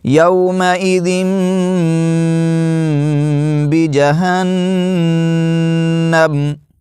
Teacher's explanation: نون ساکن یا نون تنوین کے بعد با آ جائے تو نون کو میم سے بدل کر پڑھا جاتا ہے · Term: اقلاب